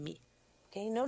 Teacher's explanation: Note que não há explosão alguma. Seguramos os lábios juntos e prolongamos o som.